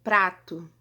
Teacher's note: um toque de leve, um tapinha de leve que a nossa língua dá no nosso palato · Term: TEP